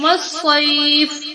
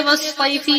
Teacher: والصیف وقف کی وجہ سے والصیفی نہیں پڑھیں گے